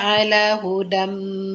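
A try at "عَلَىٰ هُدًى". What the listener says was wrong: Ala. Tadi kurang panjang nih Kak. Kakak ala hudam dia termasuk.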